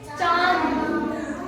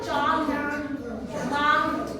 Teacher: अनुनासिक को कैसे बोलते हैं, नाक और गले से आप बोलेंगे।